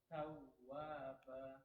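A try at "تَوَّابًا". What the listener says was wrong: Dia ditekan, Pak. Tawwa itu mengalir. Tawwa itu masih mengalir ya. Terasa dia. Tawwaba.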